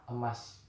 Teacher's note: Bunyi vokal E adalah bunyi vokal pusat tengah tak bundar.